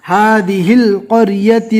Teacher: ہا کے زیر کو لام سے ملانا ہے